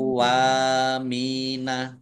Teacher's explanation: wawunya dibaca double, dibaca kau dulu